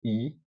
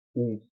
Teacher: a possibilidade de os lábios estarem distesos, como quando a gente diz i, que o lábio fique esticado ou arredondados quando dizemos u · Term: lábios distesos